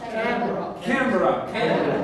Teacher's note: it's a word having two syllables. The stress on the first one.